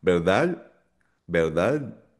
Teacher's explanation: Hindi masyadong kinukompleto yung D sound.